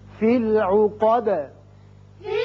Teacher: آیت ختم ہو رہی ہے، دال ساکن کر دیں گے، دال کی صفت قلقلہ ادا ہوگی